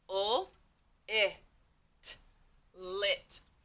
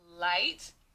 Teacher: So notice when I say the word lit, I do not hear long I. Ul, it. I hear short I.